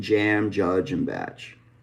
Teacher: africate which is a combination of a stop and a fricative